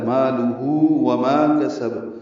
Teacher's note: واو ہونٹوں کی نا تمام گلائی سے ادا ہوگی، مالک مدہ 2 حرکات لمبا۔